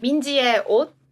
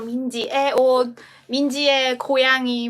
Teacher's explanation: 의, it has to be 의 in the first place, but when it has the meaning of possession, like for example, 민지의 옷, Minji's clothes, then we pronounce it as 에.